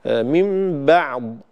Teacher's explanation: الباء والعين حرفان مرققان فلا يصح تفخيمهما. كذلك الضاد لا يجوز قلقلتها، لا يصح قلقلة الضاد لدى الوقف عليها، فلا أقول من بعض ولا أقول من بعض همس، بعض همس لا يصح، وإنما أعطيها صفة الاستطالة وأنهي صوت الضاد بدون قلقلة ولا همس، فأقول بعضها من بعض بهذا الشكل.